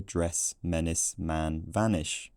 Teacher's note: The two-way distinction has been preserved because the lower of the vowels just sits even lower in our accents.